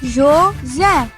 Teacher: A última sílaba é a mais forte. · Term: sílaba tônica